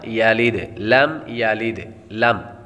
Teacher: میم ساکن پر غنہ نہیں کریں گے، کیونکہ یہاں پر اظہار شفوی کا قاعدہ لگے گا۔ میم ساکن کے بعد با اور میم کے علاوہ کوئی اور حرف آ جائے تو غنہ نہیں کریں گے۔